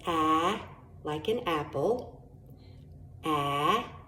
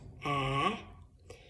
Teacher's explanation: if you look at my tongue, it's up a little bit in the back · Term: short A